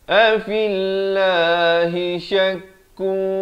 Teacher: ikhfa hakiki. Di sini disamarkan dua harakat